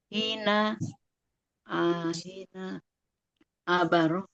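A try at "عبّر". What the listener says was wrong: tashdid abbara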